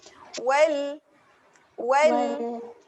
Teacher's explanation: kena terus tempel kepada gusi, tak boleh lagi dilantunkan · Lam dekat hujung lidah, cucuk gusi atas. Okay, hujung lidah, cucuk gusi. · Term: lam yang bertanda sukun